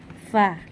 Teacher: huruf Fa ini keluar dari bibir bawah bagian dalam yang bertemu dengan ujung gigi seri atas kita